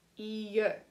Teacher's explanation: the L's do not make a L sound like they normally do. They make a Y sound, like a Y.